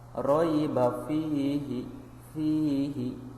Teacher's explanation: Ya mati sebelumnya harokat kasroh, ini namanya adalah mad tabi'i atau mad asli. Dibacanya adalah 2 harokat.